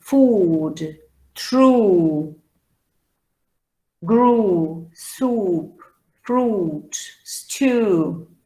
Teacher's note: the oo sound, which is a long and back sound